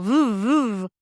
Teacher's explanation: this is not an F it's a V and I want a v sound so make it like sound like a motorcycle v v and you got and feel the vibration are you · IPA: /v/